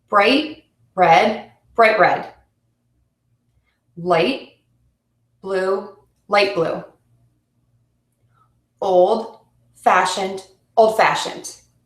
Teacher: compound adjectives are also the same the second word is stressed